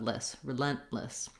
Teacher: I keep the N sound very short, and then I release right into the L of less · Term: stop T